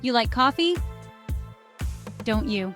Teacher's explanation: Notice how my voice goes up at the end because I'm not entirely sure if you like coffee. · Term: rising intonation